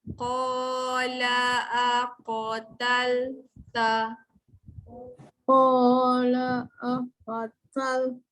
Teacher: tal jangan baca tol. Dia nipis. Qa je tebal.